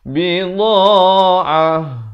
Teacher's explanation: Bila waqaf di sini ta marbutah ditukarkan kepada bunyi ha.